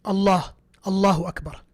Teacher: the word Allah with the Lam is heavy